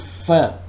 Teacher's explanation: when i produce the sound fur my upper teeth are touching the lower lip